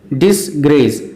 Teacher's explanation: Disgrace is a single word, but it is comprised of two syllables. Dis is unstressed, grace is stressed.